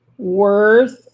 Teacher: Vous entendez à la fin, c'est comme un soufflement en fait, et c'est le bruit du souffle entre les dents et la bouche, excusez-moi, entre les dents et la langue qui va provoquer en fait le son.